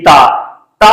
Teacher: आपकी जीव जब तक आपकी दात को स्पर्श नहीं करेगी तब तक आप ता नहीं बोल सकते ता तो ता बोलेंगे तो जीव आपकी दात को स्पर्श करेगी